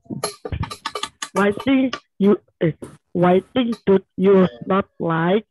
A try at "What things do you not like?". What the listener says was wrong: What things, bukan white.